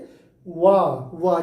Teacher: और वा को जब बोलेंगे तो हमारी जीभ टकरा नहीं रही है, बल्कि आप वहीं पे अपना थोड़ा सा हिल डुल रही है और आवाज हमारी अंदर से आ रही है, इसीलिए इसे हम जो है जब बोल रहे हैं तो इसे वाह देखो जीभ हमारी टकरा नहीं रही है, बल्कि हमारे ओठ जो है कंपन कर रहे